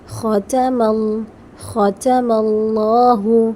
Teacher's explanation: یہاں پر میم جو ہے وہ لام سے جوائن ہو رہا ہے